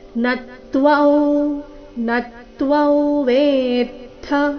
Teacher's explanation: ತ್ವ ಆದ ನಂತರ ಅನುಸ್ವಾರ ಉಚ್ಚಾರಣೆ ನಾಸಿಕಾ ವ